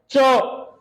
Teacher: च में अपन बोलेंगे तो अपने जीवा है वो तालु के लगेगी